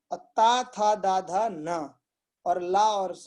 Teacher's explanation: ता, था, दा, धा, न, और ला और सा ये दंत, इनका दंत का प्रयोग करके उत्पन्न होते हैं